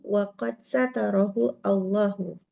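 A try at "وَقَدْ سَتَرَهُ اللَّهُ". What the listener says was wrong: Langsung disambung. Satarahullahu.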